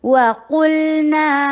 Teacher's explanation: واو ہونٹوں کی گولائی سے ادا ہوتے ہیں